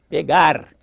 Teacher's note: E o R é lingual, não é R. Não é para limpar a garganta, é lingual, R. O som do R é isso.